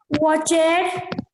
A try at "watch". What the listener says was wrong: Not watch it, watch. We do not pronounce. Watch.